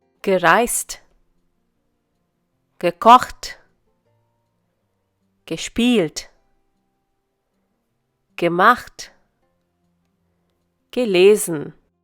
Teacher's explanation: Even in the past form, the accent is on the stem.